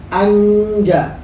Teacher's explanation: Sudah persiapan di tengah lidah karena jim posisinya di syajriyah, di lidah. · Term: ikhfa